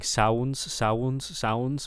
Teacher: the ow, the diphthongs I think are maybe a little too long there